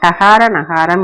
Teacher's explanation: நாவின் நுனி அன்னத்தின் நுனிப்பகுதியை பொருந்த டகார நகாரம் என்னும் இரண்டும் பிறக்கும்.